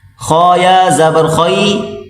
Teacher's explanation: خا کو موٹا کریں، خا اور یا آپس میں ملا کر پڑھیں